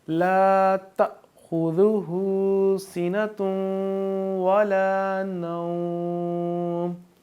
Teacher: سینۃ وہاں پہ تشدید ہے تو اس کو ہم یہاں پہ اپنی آواز کو ناک میں لے کے جائیں گے، یعنی کہ گنہ کریں گے